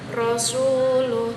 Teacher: tepi lidah menempel pada langit-langit mulut yaitu huruf ro